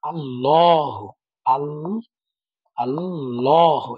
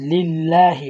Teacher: এই তাসদিদের ডাইনের হরফে যদি জেদ থাকে তাহলে এটা হবে পাতলা, লা হবে।